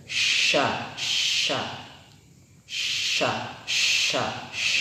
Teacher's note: Tengah-tengah lidah sejajar dengan langit-langit, tapi tidak menempel ya.